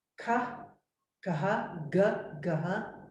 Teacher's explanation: guttural that means here in the throat is where we make those sounds